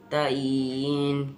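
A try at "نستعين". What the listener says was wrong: आइन का मखरज सही करो, तईन।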